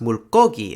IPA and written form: muɭk͈ogi (물고기)